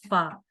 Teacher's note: فا کا مخرج یہ ہے کہ دونوں جو اوپر کے دانتوں کا جو سامنے 2 دانتوں کا کنارہ ہے وہ نیچے والے ہونٹ کے تری والے حصے یعنی اندرونی حصے کے ساتھ ٹچ ہوتا ہے تو فا ادا ہوتا ہے، فا، ٹھیک ہے۔